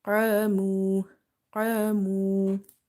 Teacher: alif is heavy because of qaf, as well as we read it by stretching because alif is madda · Qaf is heavy because it's from the heavy letters, musta'aliya letters, which are heavy under any condition. And then if you see after heavy letters alif, then this alif will also be heavy.